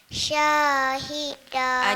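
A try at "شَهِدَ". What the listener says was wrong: tak ada panjang. Syah tu tak ada panjang kalimah. Syahida.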